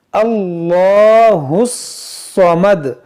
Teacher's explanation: अब 'हा' को 'स्वाद' से जोड़िए। हम इस अलिफ-लाम का पाठ नहीं करेंगे।